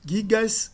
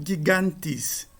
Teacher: Ao se acrescentar o S no nome nativo singular, a dental t cai, a nasal cai. E para compensar a queda da nasal alonga-se o a.